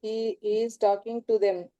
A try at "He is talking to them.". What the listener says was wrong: Very good. Very good.